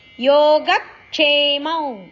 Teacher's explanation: ಗ ಅಕ್ಷರದ ಮೇಲೆ ಆಘಾತ ಇದೆ